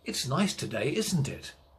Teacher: so if you know the answer the voice goes down at the end